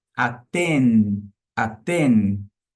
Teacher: Lábios fechados. E aten você encosta a sua língua na parte inferior dos dentes superiores